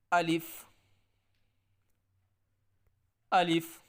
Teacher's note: اس الف کو نہ لمبا کر کے پڑھنا ہے اور نہ اس کے اندر جھٹکا آنا ہے آواز کے اندر